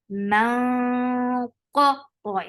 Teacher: qa is heavy, but the sound is short.